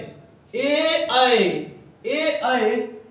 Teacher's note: ए और ऐ का उच्चारण स्थान कंठ और तालू दोनों से होता है